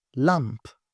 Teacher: The sound L here in this word is clear L